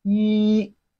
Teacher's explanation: it has a flat tone of Chinese language